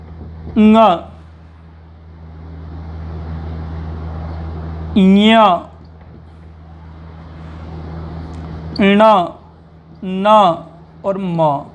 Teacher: इन 5 के उच्चारण में नासिका से आवाज आती है। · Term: नासिक के व्यंजन